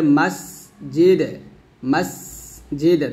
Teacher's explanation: দালটা কলকলা হবে, আর সিন এখানে বাতাস হবে